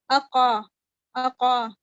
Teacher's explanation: آپ جو ہیں آپ ان کی ساؤنڈز کو مرج نہیں کرتے. حمزہ اور قاف کی جو ساؤنڈ ہے آپ ان کو مرج نہیں کرتے بلکہ بریک کر کے پڑھتے ہیں، یعنی واضح کرتے ہیں.